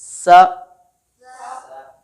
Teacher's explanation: सीटी की आवाज़ तब आती है जब हम ज़ुबान की नोक को सामने नीचे वाले दांतों की जड़ों को लगाते हैं